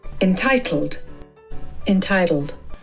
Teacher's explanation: The British may say entitled, emphasizing the T sound a little more.